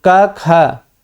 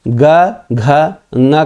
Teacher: का खा आप बोल रहे हैं, च छ बोल रहे हैं तो श्वास निकल रही है, लेकिन ज झ ञ बोलते हैं तो देखिए आवाज़ झंझना के निकलती है, तो यही नाद है। और क ख में सिर्फ श्वास निकलता है, और जब ग घ ङ बोलते हैं तो श्वास के साथ झंझनाहट रहती है। और ये आप देखिए क ख बोलते हैं तो इसमें अघोष होता है, ग घ ङ जब बोलते हैं आवाज़ थोड़ी देर तक गूंजती है।